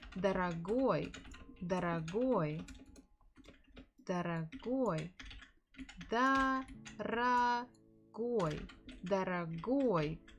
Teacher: The stress falls on the final syllable.